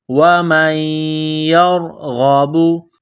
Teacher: یا کے اوپر تشدید ہے تو یہاں پر غنہ کریں گے، آواز ناک میں چھپائیں گے۔ اس ناک میں آواز چھپانے کو اخفا کہتے ہیں۔